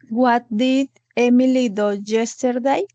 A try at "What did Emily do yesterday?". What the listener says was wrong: Solo que se pronuncia do, como si hubiera una U. What did Emily do yesterday?